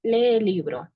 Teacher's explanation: cuando dos vocales iguales se juntan, estas tienden a alargarse. Por ejemplo, lee el libro. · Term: vocales largas